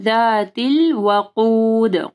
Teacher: قاف کو موٹا پڑھنا ہے اور دال کے اوپر کلکلا کرنا ہے